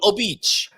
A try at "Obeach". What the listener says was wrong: You're emphasizing the I now. You're saying oh beach. No, it's all beach.